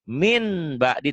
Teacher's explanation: iqlab bunyi n-nya jadi m tapi bindeng